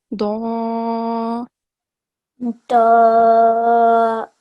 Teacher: we are raising our tongue, the back of our tongue, to get the thick sound. At the same time, the side of our tongue is touching the upper gums.